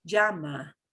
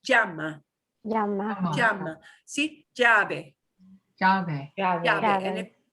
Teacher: I do the little bit of the je before the Y, but really, really faint.